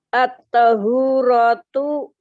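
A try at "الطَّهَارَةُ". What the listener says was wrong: Kalau setelah huruf itu ada alif, pasti dia di fathah. At-taharatu Ya, setelah H. Ya, tadi kan jenengan baca at-tahuratu. Jadi kalau setelah huruf itu ada alif, pasti di fathah.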